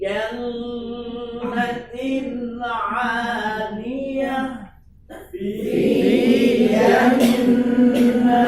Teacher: Nun Nun musyaddadah di situ gunahkan selama dua harakat